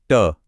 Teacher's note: ट वर्क की आवाजों के लिए हमारी जीभ पीछे की तरफ ऐसे कर्ल होती है और फिर मुर्धा को टच करती है